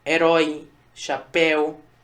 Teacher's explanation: Veja, eu não digo herói, não é um O fechado, é um O aberto.